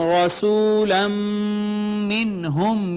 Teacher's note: میم مشدد آ گئی حروف ادغام میں سے، ما قبل تھا نون تنوین، میم نے ما قبل کو اپنے اندر مدغم کر لیا تو یہ ادغام بالغنہ ہو گیا